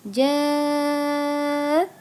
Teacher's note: bertemu dengan Hamzah atau Alif dalam satu kata jadi bacanya selama lima harakat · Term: mad wajib muttasil